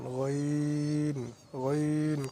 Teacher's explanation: কণ্ঠনালীর শেষ হইতে গইন উচ্চারিত হয়